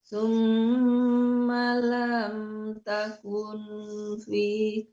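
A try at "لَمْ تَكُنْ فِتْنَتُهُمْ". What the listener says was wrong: Jangan takun ya Bu, jangan takun ya, tapi disamarkan antara nun dan fa itu hukumnya ikhfa hakiki ya. Lam takum antara nun dan fa. Takum fits.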